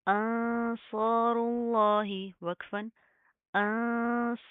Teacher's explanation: लफ्ज़ अल्लाह को हम मोटा पढ़ेंगे, क्यों, क्योंकि उसके माकबल पेश है